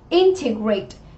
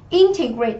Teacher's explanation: trọng âm của chúng ta sẽ rơi âm tiết thứ nhất và là động từ.